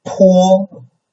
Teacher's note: only the first tone is high and level. So it's high, it's the highest tone. So, and it's very level.